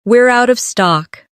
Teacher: Stress, out of stock to make it clear.